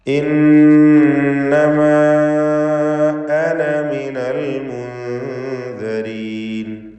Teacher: ഇന്നമ എന്നതിലെ അലിഫിന് 4-5 ഹറക്കത്തിൻ്റെ അളവിലുള്ള മദ് മുൻഫസിൽ ജായിസ് നൽകേണ്ടതാണ്.